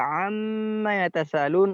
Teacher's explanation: Kalau mim kita pencet hidungnya ketika amma yatasalun maka dia akan hilang suaranya karena hanya di sana dia tempat mengalir.